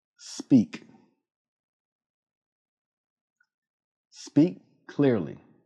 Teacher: Move directly from the S sound to the P sound. Do not add an extra vowel. Say speak, not speak. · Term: consonant cluster